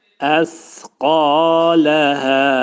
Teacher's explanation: Və əxrəcətil ərdu Əsqaləhə kəlməsində sə hərfi pəltək, sə hərfinin üstündə ani məqamda tormuzlanma verməliyik. Dil iki dişin arasına girərək xəfif şəkildə pəltək səni çıxartmaq lazımdır.